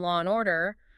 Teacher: the silent R kind of reappears when the next word starts with a vowel for example in law and order the r at the end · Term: linking R